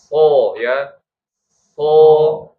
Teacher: Tapi masing-masing desisnya itu berbeda. Shad itu desisnya seperti bunyi angsa ya.